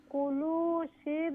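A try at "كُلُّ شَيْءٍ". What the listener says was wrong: আবার তাসদিদ লামো তাসদিদ আছে কুল্লু শির বুম মুক্তাদার বুম না বিম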